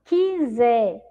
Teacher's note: Nós não ouvimos o som da vogal U.